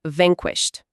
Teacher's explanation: Esse final com ED me quebra, fica vanquished. Não, o ED aí soa como um T seco, porque o som antes dele, o sh, não vibra as cordas vocais.